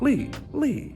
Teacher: the fourth tone also is short but it's dropping it's the line like this it's the karate chop Lee Lee · you start from a high voice and you drop to a low really quickly